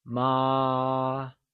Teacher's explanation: It is a constant high level tone said as ah.